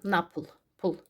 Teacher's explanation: Vurğu n-dan sonra a-ya düşür və pol sözü, baxın, pulu kimi tələffüz olunacaq. Bu cür, baxın, napıl, pul.